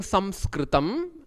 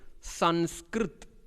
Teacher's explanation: In Hindi, as far as that language, all the words of Sanskrit which ends with or this visarga, this aha, namaha, anywhere, all those will be taken off and only this will come. In Hindi, instead of saying Samskritam, how they say is Sanskrit, because they will not pronounce the A at the end of any letter.